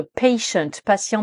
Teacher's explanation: che et d'ailleurs c'est aussi le cas dans patient le T le premier t de patient se prononce comme nos lettres ch en français che donc vous voyez que la différence entre patient patient patiente